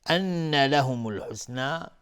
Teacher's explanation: نون مشدد دو حرکت غنه میدیم